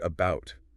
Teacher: We stress the second syllable, bout. So the A at the beginning becomes a schwa